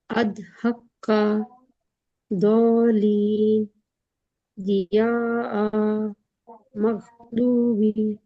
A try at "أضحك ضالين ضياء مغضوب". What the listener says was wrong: दाल जैसा साउंड कर रहा है, फिर से पढ़िए।